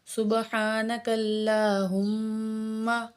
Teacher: ہم کے میم میں ہم غنہ کریں گے، شد ہے اس کے اوپر